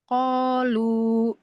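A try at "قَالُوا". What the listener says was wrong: lu-nya panjangin lagi boleh Mbak 4 atau 5.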